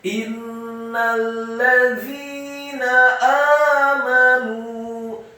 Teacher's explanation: Selanjutnya langsung disambung ke huruf lam yang tasydid dan fathah satu harokat. Za-nya dibaca tipis, tarqiq, lidahnya agak keluar sedikit, kasrah dua harokat karena setelahnya ada ya sukun, dan nunnya dibaca tipis, fathah satu harokat.